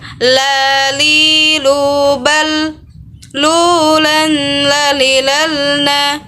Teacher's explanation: Huruf la atau huruf lam keluar dengan menyentuhkan lidah terdekat dengan langit-langit bagian depan. La. Posisinya berada di depan huruf ra.